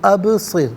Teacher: ابصر میں با ساکن ہے لیکن حرف قلقلہ ہے تو آواز لوٹتی ہوئی محسوس ہونی چاہیے، ابصر نہیں بلکہ ابصر، را ساکن ما قبل صاد کے نیچے زیر، را ساکن کو باریک کر کے پڑھا جائے گا۔